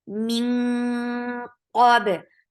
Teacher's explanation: Qaf is heavy. For fatha, open your jaws. Ba will get sifa of qalqala.